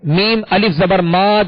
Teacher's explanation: الف سے پہلے زبر ہے میم پر، تو اسے دو حرکت یعنی ایک الف کی مقدار کھینچ کر ادا کریں گے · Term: الف مدہ